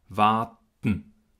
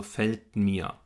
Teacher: wir bereiten ein richtiges T vor, und dann drücken wir aber alles durch die Nase raus. Diesen Verschluss lösen wir also nasal.